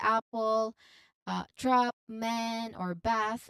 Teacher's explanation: To make this sound, your mouth is usually quite open and your tongue is relatively flat in the middle of your mouth. It's a quick open a sound distinct from the ah in the father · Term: short a vowel sound